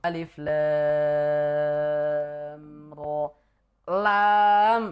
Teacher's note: mad lazim harfi mukhaffaf karena dia tidak ketemu tasdid di belakangnya dan tidak idgham ke huruf berikutnya. Hm. Jadi sukun murni memang sukun lam.